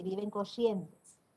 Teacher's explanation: La R arrastrada, que es común en nuestra provincia, es una marca regional. Por eso, en esta región, mucha gente dice que viven Corrientes.